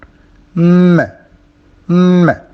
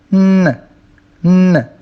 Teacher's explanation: when the velum is lowered, allowing the air to enter the nasal cavity, these are nasals. If it is not lowered, the sounds are oral.